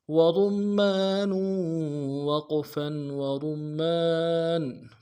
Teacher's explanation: کھینچیں گے، وَرُمَّانٌ، نون کے اوپر تنوین ہے، غنہ کریں گے، وقف کی صورت میں تنوین کو جزم سے بدلیں گے